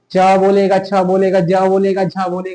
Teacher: च वर्ग का उच्चारण स्थान तालु